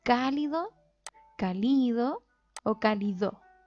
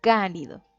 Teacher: Todas las palabras tienen una sílaba tónica y puede llevar sílabas átonas, que son las que no se carga la voz. En este caso sería li y do, serían sílabas átonas. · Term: esdrújula